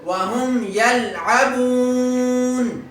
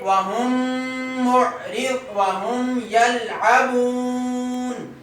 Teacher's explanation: جو یلعبون میں ہم نے مد کی ہے اس کو کہتے ہیں مد عارضی. یہ کون سی مد ہے؟ مد عارضی. اور یہ 3 الف کے برابر لمبی ہوتی ہے